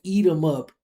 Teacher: she could say eat them up, because we can drop that TH